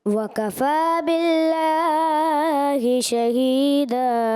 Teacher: जी बेटा, माशाल्लाह आपने अच्छी तिलावत करी, कुछ भूल की गलत तो नहीं की, लेकिन वक़फ़ा बिल्लाह का जो लाम की खड़ी हरकत है ना, कुछ ज़्यादा दराज कर दी